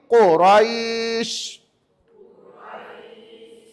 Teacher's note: Ingat bukan sin yang panjang. Panjang rai tu yang panjang. Jadi jangan baca gini quraisy. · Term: mat lin